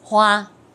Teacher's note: Chữ này đọc hoa, hoa âm thứ nhất, ngang hoàn toàn.